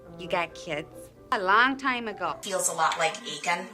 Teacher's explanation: lot and cloth, lot and thought, and cot and caught. There is no difference. Those words merge in a Minnesota accent.